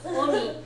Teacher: If you put too much emphasis on the O and shorten the ni too much, it starts to sound like you're saying Mr. Demon instead of older brother.